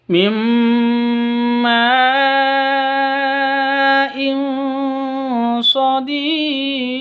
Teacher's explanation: tanwin bertemu dengan Shad cara bacanya samar disertai dengung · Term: ikhfa